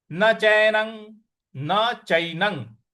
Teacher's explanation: च पर ऐ की मात्रा है और न पर जो अनुस्वार है उसका उच्चारण हमें अंग ले आना है